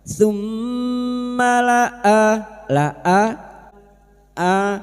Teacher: tum mim yang bertasdid gunah musyaddadah kita dengungkan selama tiga harakat